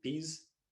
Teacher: In Indian English, in our study, words like peas often produced without aspiration